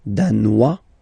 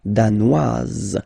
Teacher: Danois, don't pronounce the final S. Danoise, here you pronounce it.